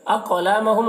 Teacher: اقلامہم قاف کو پر پڑھیں گے اور قاف حروف مستعلیہ میں سے ہے اور قاف میں قلقلہ کریں گے کیونکہ قاف حروف قلقلہ میں سے بھی ہے۔ ایہم یہاں پر میم ساکن کے بعد حمزہ ہے، میم میں اظہار شفوی ہوگا، میم کو ظاہر کر کے جلد پڑھیں گے۔